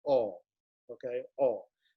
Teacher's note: remember it's an aw sound not a pure o sound